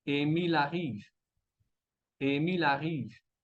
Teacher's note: El primer sonido, escuchamos la A. Entonces, vamos a conectar la L de Emil avec la A de arrive para decir Emil arrive